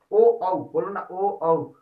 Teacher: ओ का उच्चारण स्थान कंठ और होठ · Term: कंठोष्ठ वर्ण